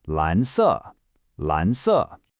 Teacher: a rising second tone followed by a falling fourth tone